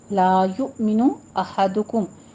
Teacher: میم پہ اظہار شفیع، اس کو لمبا نہیں کھینچنا ہے